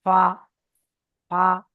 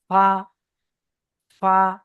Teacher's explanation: নিচের ঠোঁটের ভিজে অংশ এবং সামনের উপরের দুই দাঁতের আগার সাথে লাগিয়ে উচ্চারিত হয় ফা। সামনে নিচের ঠোঁট, নিচের ঠোঁটের ভিজে অংশ এটাই, এবং উপরে দুটো দাঁত, দাঁতের হচ্ছে গিয়ে আগা, আগার সঙ্গে এটা লাগান, ফা ফা।